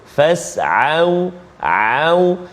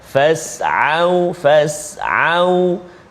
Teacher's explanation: Maka huruf Ain dia terletak di tengah halqum kita. Di tengah huruf Ain dan juga huruf Ha.